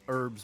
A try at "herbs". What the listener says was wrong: There's no H in herbs.